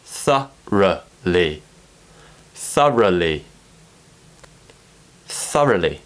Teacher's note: we go into a schwa sound which the tongue raises a little bit higher